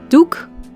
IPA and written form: duk (Doek)